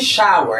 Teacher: you notice that there is an introduction of a W, wa. The voiced bilabial semivowel W, wa. So by introducing wa, we, wa, into the pronunciation of this word makes that pronunciation wrong, incorrect.